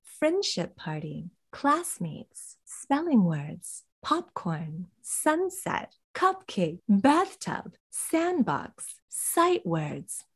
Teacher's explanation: We're stressing the first element, and in order to stress it, our intonation rises. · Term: set phrase intonation